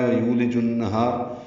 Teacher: ہا الف مدہ ہے، 2 حرکات لمبا ہے، را باریک ہے۔ · یو واو مدہ لام باریک، جیم کو النہار کی نون سے ملانا ہے، ادغام شمسی اب غنہ ہوگا۔